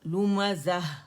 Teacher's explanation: اور اگر میں یہاں سٹاپ کر دوں نا، لومزہ، تو ہا سکون میں یہ بدل جائے گی تائی مربوطہ کی آواز